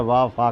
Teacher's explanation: कंठोष्ठ, कंठ और ओंठ मिलाकर के लिखे गए हैं, तो कंठ और ओंठ का प्रयोग ऊ और औ। दंतोष्ठ माने दांतों का और ओंठों का प्रयोग किया गया